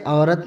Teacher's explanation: عین عربی میں حلقوی صفیری مصمتہ ہے، لیکن اردو میں مصوتے کی آواز دیتا ہے